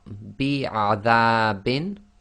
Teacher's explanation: the dal fatha alif, that's normal 2 long.